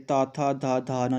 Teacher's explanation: त वर्ग जब आप बोलोगे तो आपके दंत को जीभ टच करेगी, त थ ध ध न, जब आप इसका उच्चारण करोगे तो आपकी जीभ क्या है, दांत को टच करेगी।